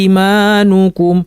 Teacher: ওয়ার্শ পড়লে এই আমানাকে 2 আলিফ বা 3 আলিফ পর্যন্ত লম্বা পড়তে পারে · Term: মাদ বাদাল